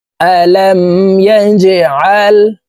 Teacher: জিম কলকলার হরফ নিচের দিকে ধাবিত করে ধাক্কা দিয়ে উচ্চারণ করব।